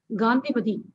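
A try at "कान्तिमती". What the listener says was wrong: It is Kantimati, not Gandhi. Don't make it Gandhi. It is not Gandhi. It has nothing to do with Gandhi. Kanti.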